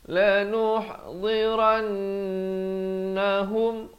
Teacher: ran itu wajibul gunnah, wajib dengung dua harakat. Hum idhar syafawi jangan panjang terus masuk.